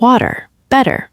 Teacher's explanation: We completely mastered the exceptionally crucial flat T, which beautifully softens words like water, better